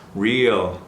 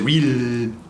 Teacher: We want to tighten up for that E sound, but again, once we hit that L, relax.